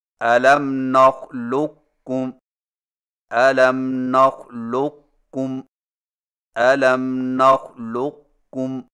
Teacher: قاف کو موٹا اور بغیر جھٹکا کے کاف میں داخل کر کے اس طرح پڑھیں کہ قاف کے موٹا پن کو ظاہر کرنے کے فوراً بعد کاف بریک ادا کریں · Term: ادغام ناقص